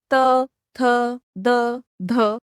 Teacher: अब अगला है त वर्ग का उच्चारण स्थान। तो इन्हें बोलते समय जीभ का आगे का जो हिस्सा होता है वह दांतों के पिछले हिस्से को टच करता है, इसलिए इन्हें दंत्याः वर्णाः भी कहा जाता है।